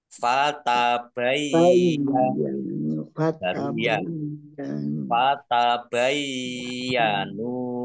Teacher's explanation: ya-nya dibaca double, ya, dibaca sukun dulu